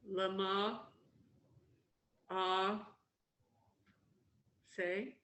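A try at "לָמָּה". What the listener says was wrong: Yes, excellent. Look at it again and do it again, but you got it right.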